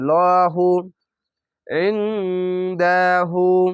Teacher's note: উল্টা পেশে এক আলিফ টেনে পড়বেন